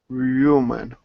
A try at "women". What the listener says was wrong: Not human, but like sit.